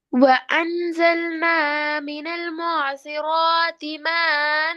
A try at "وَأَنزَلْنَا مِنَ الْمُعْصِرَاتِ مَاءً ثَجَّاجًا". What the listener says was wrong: மண் மண் மண் ரெண்டு பழகி மீம்ல உரிய 6 செகண்ட் அளவு 3 செகண்டுக்கு நீட்டையும் இல்லை அன் என்றதை சரியா உச்சரிக்கையும் இல்லை பாருங்க وأنزلنا من المعصرات من المعصرات ماء ثجاجا மா நீட்டினது போல போதாது